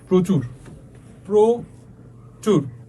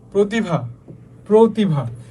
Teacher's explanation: শব্দের প্রথমে র ফলা যুক্ত হলে অ এর উচ্চারণ কিসের মতো হবে? ও, তার মানে অ এর মতো থাকবে না, অ চেঞ্জ হয়ে যাবে, ঠিক আছে।